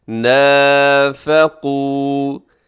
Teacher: قاف موٹا رکھیے گا، واو مدہ ہے تو اسے ذرا کھینچ کے